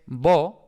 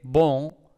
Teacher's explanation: tenemos esta on nasalizada en la que el aire ha salido tanto por la boca como por la nariz, y eso significa bueno.